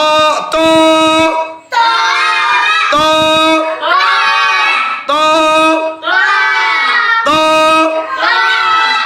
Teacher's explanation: একেবারে শক্ত এবং মোটা, ঠিক আছে? এবং বাতাস বন্ধ।